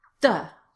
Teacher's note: You can see that my mouth is in the right place, but it sounds like a D or a duh.